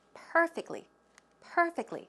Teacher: where does a stress go it goes on the first syllable